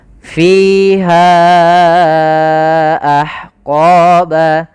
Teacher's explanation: Kita panjangkan sepanjang 4 atau 5 harokat untuk riwayat Imam Hafiz an Asim dari jalurnya Imam Syatibi. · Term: mad jaiz munfasil